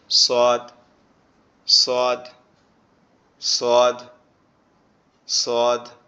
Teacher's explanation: সোয়াদটা আবার আমাদের জিহ্বার আগা সামনের নিচের দুই দাঁতের আগার সঙ্গে লাগবে, লেগে উচ্চারিত হবে সোয়াদ, সোয়াদ, সোয়াদ, সোয়াদ।